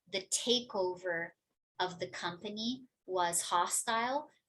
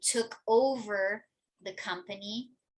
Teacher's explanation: The noun form also tends to be said a little bit more quickly than the verb form.